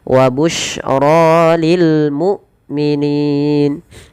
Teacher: Kemudian pada lafro dibaca dengan tebal ro-nya, dan ini bukan wa busyroya ya, tidak dibaca wa busyroya, tapi wa busyra lil mu'minin. Hamzah tidak boleh diseret, dan dia harus dijelaskan suara bunyinya, penahanan daripada suaranya dan penahanan dari nafasnya.